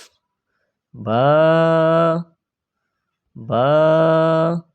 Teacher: 2 ঠোঁট মিলাইবেন, ছেড়ে দিবেন, বা হয়ে যাবে।